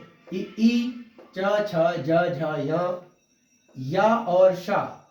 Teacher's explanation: उच्चारण स्थान इनका हो गया तालु और इस वर्ग का नाम है तालव्य